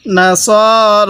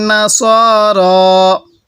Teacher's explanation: এই সদের মধ্যে এক আলিফ টান হবে, রয়ের মধ্যেও এক আলিফ টান হবে, কারণ রয়ের উপর খারা জবর, আর খারা জবর খারাজের উল্টা পেশ হলে সেখানে আমাদের এক আলিফ টানতে হয়।